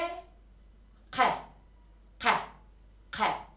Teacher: K harfini daha geriden daha gırtlaktan Tok bir şekilde söylüyorum